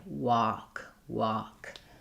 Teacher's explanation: the main difference between work and walk is that walk has the a open, no tightness, no r